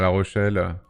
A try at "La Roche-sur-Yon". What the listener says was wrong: La Roche-sur-Yon. Non, t'as dit La Rochelle.